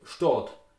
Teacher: If you look at the word Stadt, for example, Stadt with A, in Austria you will pronounce it Stadt with O